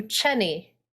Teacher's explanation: with a german accent my name would turn into cheney so the j becomes a ch